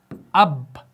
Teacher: होंठों को बंद रखा, अब यहां पर हमजा बा ज़बर अब, होंठों को छोड़ दिया तो कलकला अदा हो गया